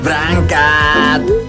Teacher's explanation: dari kata berangkat, itu merupakan penghilangan fonem E, yang seharusnya yaitu berangkat.